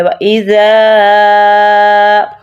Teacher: اور ز کی ز نہیں نکالنی، زال ہے، اس کو ہم نے دونوں دانتوں کے سینٹر میں زبان رکھ کر پڑھنا ہے کہ اس کی ز کی آواز نہ نکلے